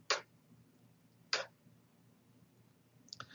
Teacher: The velar stop is kappa, and you'll notice that it is voiceless.